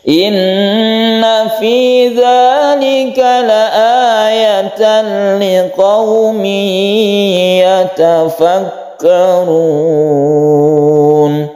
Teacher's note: Inna ini juga guna musyaddadah kita dengungkan.